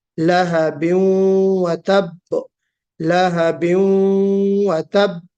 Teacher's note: ये जो तनवीन है ये वाव में मर्ज हो जाएगी गुन्ने के साथ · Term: इदगाम नाकिस